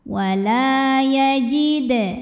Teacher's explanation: dibacanya dipantulkan dengan pantulan yang kecil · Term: Qalqalah Sugra